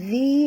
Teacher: Zi di sini sentil lidah, kerana makhraj zal di hujung lidah. Zi dua harakat ma'asli.